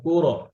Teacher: র ছেড়ে দিবেন না, কুর, কুর ছাড়লে কলকলা হয়ে যায়